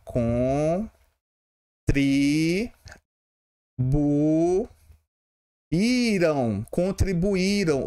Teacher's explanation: Se separa assim. E mais uma vez eu tenho aqui uma paroxítona, porque a sílaba tônica é a penúltima.